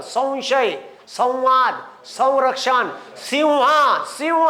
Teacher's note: आहे पहा अनुस्वाराच्या पुढे र व शष स आणि ज्ञ तर अनुस्वार कायम ठेवायचा आणि अनुसराचा उच्चार व सारखा घ्यायचा